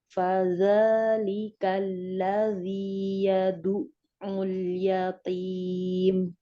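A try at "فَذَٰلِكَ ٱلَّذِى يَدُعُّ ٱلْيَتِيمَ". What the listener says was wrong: Alirkan lagi ainnya. Yadu'ul. Dialirkan, suaranya ngalir ya. Kalau yadu'ul, ini berarti tertahan suaranya. Nah, sedangkan huruf ain ini punya aliran suara. Yadu'ul, yadu'ul. Jadi ngalir ya. Yadu'ul.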